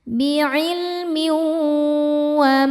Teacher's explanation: Berikutnya ada idghamunah karena ada tanwin kasrah menghadapi huruf wau. Cara bacanya tanwinnya masukkan ke wau dan tahan. Dengungkan.